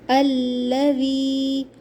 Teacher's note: جب یا ساکن سے پہلے زیر ہو تو اسے جو ہے 2 کاؤنٹس کھینچتے ہیں، یا مدہ ہوتا ہے۔